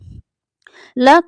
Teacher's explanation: ल एक दंत व्य वर्ण है यानी दंत से बोले जाने वाला वर्ड है